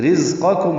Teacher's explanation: رزقکم را باریک ہے، زا تیز صفیر کی آواز سے ادا ہوگا